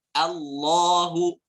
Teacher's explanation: Tebal suaranya, vokalnya O. Allahu. A-nya jelas, lamnya tebal jelas. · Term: tafkhim